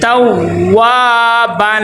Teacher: ادا کرے تو ہونٹ گول ہونی چاہیے، اور اس کے آگے واو کے آگے الف مدہ آ گیا ہے، تو واو کو ایک الف کے برابر لمبا کریں گے ، توابن، وقف یہاں پہ ہوگا کیونکہ یہاں پہ آیت مکمل